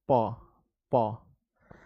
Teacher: प तो देखिए दोनों ओष्ठ जो है ना आगे वाला वो एक दूसरे से चिपक रहा है। प तो ये दोनों ओष्ठ एक दूसरे से चिपकता है बच्चों।